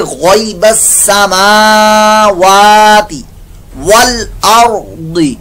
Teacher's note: را پر موٹا اور ضاد بھی پر موٹا